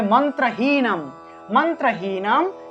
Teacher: অনুস্বার থাকলে সেটাকে ম রূপে উচ্চারণ করা হয়ে থাকে হসন্ত যুক্ত ম